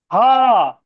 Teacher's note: تھوڑا سا سختی، بیچ حلق سے بولنا ہے اس کو